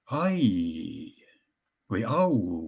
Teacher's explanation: See viimane osa sellest diftongist on raudselt paigas, seal ei muutu mitte midagi.